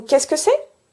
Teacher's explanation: je ne prononce pas le « e » du « ce » dans « qu'est-ce que ».